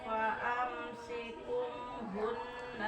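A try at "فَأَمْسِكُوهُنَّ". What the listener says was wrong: paamsiku ku panjang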